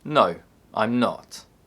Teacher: In short answers, the intonation falls.